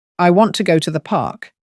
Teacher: in the sentence, I want to go to the park, the words want go, and park are typically stressed.